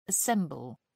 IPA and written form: əˈsɛmbəl (assemble)